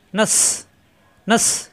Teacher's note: জিব্বা নিচে দাঁতে চাপ দিয়ে শক্ত হবে, সফির হরফ বাতাস বের হবে